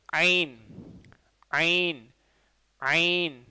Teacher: ஐன் அப்படிங்கிறது அழுத்தி சொல்கிறது தான் இருக்குது, நடு நடுத்தொண்டிலேருந்து வரும் இதுவும், ஹாவும் ஐனும் நடுத்தொண்டிலேருந்து வரக்கூடிய எழுத்து